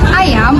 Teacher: bunyi vokal yang tidak melibatkan bundaran bibir pada saat diucapkan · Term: vokoid tabundar